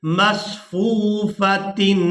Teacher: یہاں تنوین پر اخفا نہیں کریں گے، اس کی وجہ یہ ہے کہ اس کے بعد جو حمزہ ہے یہ حروف حلقی میں سے ہے، تو یہاں اب تنوین پر اخفا نہیں ہوگا، اس کی آواز کو ناک میں نہیں چھپائیں گے